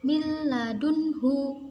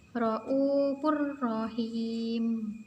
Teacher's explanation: Jadi suara nun ini dimasukkan ke huruf lam, tapi tanpa mendengung. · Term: idgham bila gunah